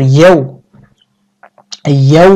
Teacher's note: ইয়াও বলার সময় ঠোঁট গোল করবে এই যে ওয়াও উচ্চারণের সময় ঠোঁট গোল করতে হয়